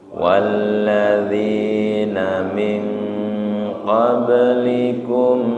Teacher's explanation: perhatikan bacaan yang dengung ming ikhfa ditahan ming